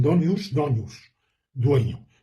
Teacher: en el castellano medieval, la N reduplicada se palataliza, se convierte en donius, donius, dueño.